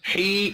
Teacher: یا مدہ ہے، اس کو بھی ایک الف کے برابر کھینچ کر پڑھنا ہے